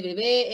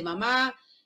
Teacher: los sonidos que se pronuncian con los labios juntos bilabiales